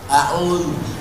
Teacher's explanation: Letakkan ujung lidah di gigi atas.